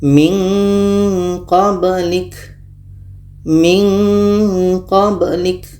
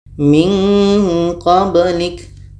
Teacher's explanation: Kenapa ada bunyi nga di situ? Karena makhraj qa ini jauh dari makhraj nun tadi.